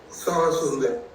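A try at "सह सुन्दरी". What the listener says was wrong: It's not Saha. Sa. Sa Sundari.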